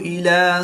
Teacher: حمزہ کو حلق کے نیچے والے حصہ سے ادا کریں گے